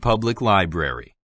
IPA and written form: ˈpʌblɪk ˈlaɪbrəri (Public Library)